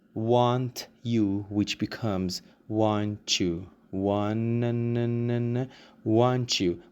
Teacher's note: we have t+ y and we make it into a liaison and the liaison is sounding like CH